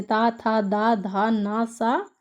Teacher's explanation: जिस वर्ण के उच्चारण में जिह्वा ऊपरी दांतों को स्पर्श करती है उन्हें हम दंत वर्ण कहलाते हैं